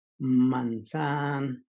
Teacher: And then the other one, which is a borrow word from Spanish, from apple, we have in the pronunciation brackets, manzan. So the N, it's a little bit longer than typically other N's that we pronounce.